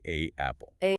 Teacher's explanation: Let's begin with the short A, the A sound, which requires a significant jaw drop.